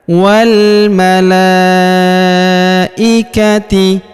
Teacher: huruf la kita panjangkan 4 atau 5 harokat karena di atas huruf la terdapat tanda garis bacaan panjang 4 atau 5 harokat.